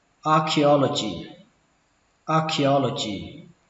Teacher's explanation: Âm đây là âm chờ, nhưng mà khi đọc là âm khờ.